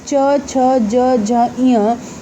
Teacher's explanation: बिना जीभ तालु के टच किए आप नहीं बोल सकते हैं, इसलिए इसे तालव्य व्यंजन कहते हैं